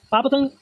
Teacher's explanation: ओष्ठ है, अल्प प्राण है, अघोष है।